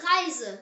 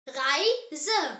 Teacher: R pronounced as air. The German air is made from the back of the throat, like you're gently gargling.